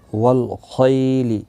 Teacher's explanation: والفضة، ضاد مستعلیہ ہے، پر پڑھا جائے گا۔ والخیل، خی یا لین ہے، تھوڑا نرمی کے ساتھ کھینچ کر ادا کریں گے۔